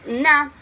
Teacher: A closure is formed the mouth between the back of the tongue and the velum. The soft palate is lowered and vocal cords vibrate